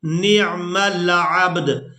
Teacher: اب یہاں پر آپ لوگ علامات وقف دیکھ رہے ہیں، تو وقف کریں گے۔ وقف کی صورت میں یہاں پر ہم نے دال کو ساکن کر دینا ہے۔ جس طرح کی جزم آپ با کے اوپر دیکھ رہے ہیں یہی جزم ہم نے دال کے اوپر بھی لگا دینی ہے، اور عین کو با ساکن اور دال ساکن کے ساتھ ملا کر ادا کریں گے۔